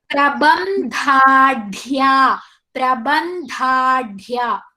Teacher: Here in the word prabandhadya, dha with elongation and da with elongation. So dha with dirgha and da with dirgha, both are side by side and both are mahapranas.